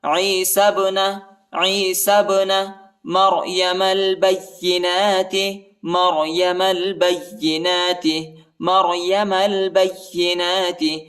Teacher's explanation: با کو یا کے ساتھ ملائیں گے، یا کو شدت کے ساتھ سختی کے ساتھ پڑھیں گے، اور نون پر کڑا زبر آیا ہے، اس کو ایک الف کی مقدار تک کھینچیں گے